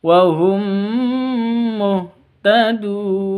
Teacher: mim mati bertemu dengan mim, idgham mislain atau idgham mimi. Dengung bacanya 2 ketuk.